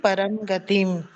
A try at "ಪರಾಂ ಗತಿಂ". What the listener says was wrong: ರಾ ಇದೆ ಅಲ್ಲಿ, ಪರಾಂ ಗತಿಂ. ರಾ ರ ಒಂದ್ ಸ್ವಲ್ಪ ವ್ಯತ್ಯಾಸವನ್ನ ಗಮನಿಸಿ.